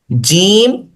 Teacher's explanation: जबान का दरमियान जब तालू के साथ लगता है तो जीम पढ़ा जाता है